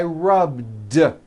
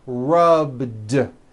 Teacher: All I did was add a voiced D sound at the end. Rubbed. It's not rubbed with an unvoiced T.